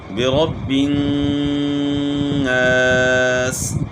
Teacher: نون میں غنہ کریں گے اور نون کو تھوڑا سا کھینچیں گے، ساتھ الف ہے